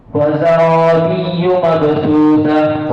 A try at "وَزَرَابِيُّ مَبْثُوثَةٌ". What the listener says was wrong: Ra, zara, wa zarabiyyu mabthusah. Ra mufakhamah indak.